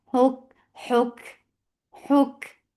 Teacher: Huk, for dhamma circle is attached with kaf. Kaf will get sifa of hams, and hams is flow of breath.